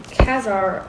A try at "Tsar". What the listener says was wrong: Also became Tsar. The C does not pronounce, so Tsar.